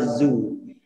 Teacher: lidahnya ditarik ke dalam dan tidak dikeluarkan nanti yang keluar itu suara Zoo